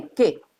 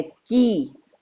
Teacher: ह्रस्वीकार के उच्चारण में कम समय लगता है और दीर्घिकार में उससे दुगुना समय लगता है